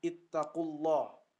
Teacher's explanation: lam yang dibaca tebal karena lafzul jalalah Allah diawali oleh huruf berharokat dhammah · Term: lam tafkhim